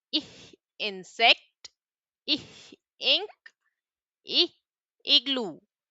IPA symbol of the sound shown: ɪ